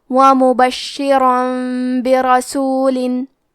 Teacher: با حروف القلب میں سے ہے، قلب کا معنی ہے بدل دینا، تو ہم تنوین کو ہلکی میم میں بدل کے اور غنہ کے ساتھ یہ حکم کو ادا کریں گے